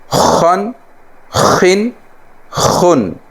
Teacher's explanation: خا جو ہے یہ گلے کے اوپر والے حصے سے ادا ہوتا ہے